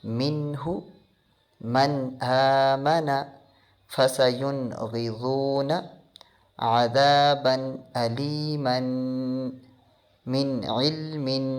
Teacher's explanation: ہم نون ساکن اور تنوین کو ظاہر کر کے پڑھیں گے، یعنی ود آؤٹ غنہ پڑھیں گے